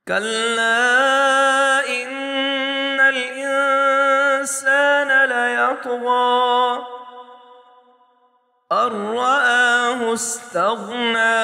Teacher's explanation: غائن کے اوپر چھوٹی مد ہے اس کو ہم 3 الف کے برابر کھینچ کر پڑھیں گے، اور ساتھ یہ موٹا حرف بھی ہے اس لیے اس کو موٹا بھی پڑھیں گے۔